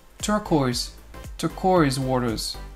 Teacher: on a une diphtongue sur le O-I. Donc c'est une double voyelle.